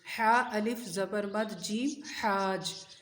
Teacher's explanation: اس کو بس حا کو لمبا کرنا ہے، ٹھیک ہے، اور جیم کے ساتھ ملانا ہے